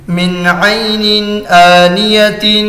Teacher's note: نون ساکن کے بعد حروف حلقی میں سے عین آ رہا ہے تو نون کو ظاہر کر کے بلا غنہ کے جلد پڑھیں گے، اس کو اظہار کہتے ہیں۔